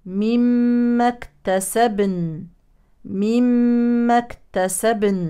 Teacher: زمن النون الساكنه اطول من زمن الباء الساكنه